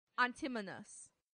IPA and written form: ˈæntɪmənəs (antimonous)